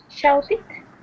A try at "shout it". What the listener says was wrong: Got to be shouted. It sounded like you said shoot it.